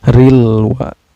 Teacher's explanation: Syarril wa, ril wa ini ada alif lam komariah karena ada alif lam bertemu dengan huruf komariah yaitu waw ya. Cara bacanya lam sukunnya ini dibaca secara jelas ya, gak boleh memantul, harus jelas. Rilwa, bukan rile, gak boleh rile, gak boleh memantul ya, tapi harus jelas bacanya.